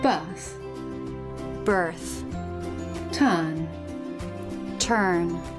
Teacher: when the letter R is in the middle position in a monosyllabic word and after a vowel in British English we tend to drop it